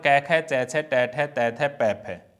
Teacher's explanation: ये ध्वनियां क्या है, अघोष हैं। इनके उच्चारण में कोई कंपन नहीं होगा।